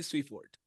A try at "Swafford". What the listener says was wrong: Okay, so it's spelled like Sweeford, but it's pronounced Swafford. It might make it a little easier to pronounce, but it's Swafford. Pretend that the E is not there. That's how you would pronounce it.